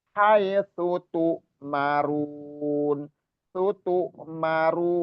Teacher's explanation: tu-nya itu bukan ain tapi hamzah.